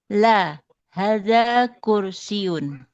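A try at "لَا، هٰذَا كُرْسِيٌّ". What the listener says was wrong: Kursiyun. kursi yana itu ada tasdid itu ya.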